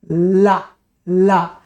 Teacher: ये जबान आगे हवा अगल-बगल से निकल रही पार्श्व से निकल रही है इसलिए ल पार्श्विक है